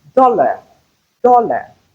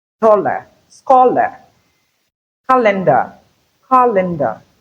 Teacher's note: For instance, if you have dollar, dollar, do is stressed, but la is unstressed. Hence, you have the schwa sound in place of AR. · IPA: /ə/